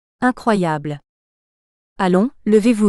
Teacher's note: la mélodie descendante ou ton descendant indique la finalité ou l'ordre impératif